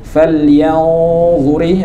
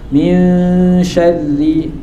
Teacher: Falyanzuri itu tebal ikhfa-nya. Ini hurufnya shin, huruf tipis. Jadi ikhfa-nya juga tipis karena ikhfa itu mengikuti huruf setelahnya. Kalau huruf setelahnya itu tebal, khussa dhautin qid, maka dia tebal.